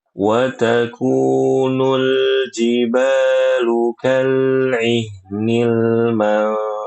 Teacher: Huruf lam itu punya sifat bainiyah dan inhiraf.